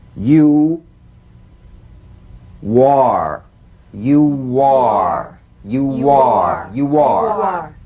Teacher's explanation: linking words that end in the stretch vowel ooh